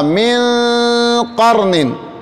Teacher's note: یہ حروف اخفا میں سے ہے، لہذا یہاں لمبا غنہ ہوگا